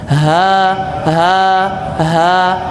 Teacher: dada kita bergetar karena posisi ha itu berada kerongkongan bagian bawah